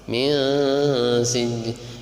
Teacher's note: Bihijaratim min sijilun mati ketemu sin, ikhfa. Min sijil, ikhfa itu samar itu artinya nunnya itu tidak jelas, karena lidah kita itu sudah siap-siap membaca sin